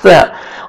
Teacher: 1 अलिफ जो मैं बोलता हूँ वो 1 सेकंड ही होता है। सा को आपने नरमी से अदा करना है ताकि सीन में साउंड नहीं जाना चाहिए।